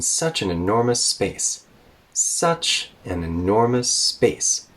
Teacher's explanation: we're done with that sentence at space. So we go down with kind of a falling tone